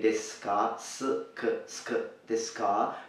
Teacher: As you see, the u hasn't been pronounced here.